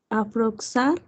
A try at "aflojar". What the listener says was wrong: No, acuérdate, es cómo leemos ese fonema, ya lo sabemos. Aflojar, sí, no afloxar, aflojar. Sí, acuérdense, ese fonema velar.